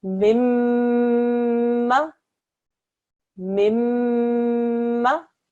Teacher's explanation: We join it just like we do any other mushaddad letter by joining and pressing down, but we also make what we call a ghunna sound.